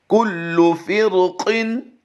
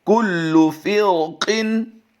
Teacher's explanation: तो इनमें से अगर कोई भी हरफ आ जाए, चूँकि यहाँ पर रा साकिन से पहले ज़ेर है, इसका हुक्म और होता, लेकिन फ़ौरन ही इसके साथ उसी कलमे में क़ाफ हुरूफ़ मुस्तालिया से आ गया है, तो यहाँ पर हम रा को फिर पुर करके पढ़ेंगे, क्योंकि यहाँ पर रा साकिन के बाद फ़ौरन ही हुरूफ़ मुस्तालिया से क़ाफ आ गया है